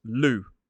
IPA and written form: luː (Lou)